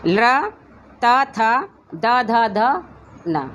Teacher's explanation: 72 ध्वनियाँ। दंतय ध्वनियाँ जो हमारी दांतों पर लगकर बोलती हैं, जो जीभ का आगे वाला भाग है वो दांतों से लगेगा